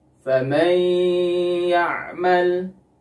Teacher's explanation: Nah, idgham bi gunnah itu gunnahnya merupakan gunnah yang paling atau sangat sempurna. Jadi harus ditahan gunnahnya atau dipanjangkan gunnahnya 2-3 harokat.